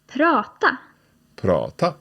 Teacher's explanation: both tala and prata have got two 'a's in them but the second 'a' is a little shorter